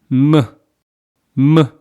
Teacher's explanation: Mium does not depend on position of your tongue when it is pronounced, and it's pronounced by closing and opening your lips